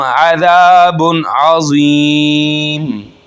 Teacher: ज़ाल ज़बान का किनारा और ऊपर दांतों के किनारों के साथ जब टच होगा तो ये निकलेगा ज़ाल, जी की आवाज़ नहीं निकलनी।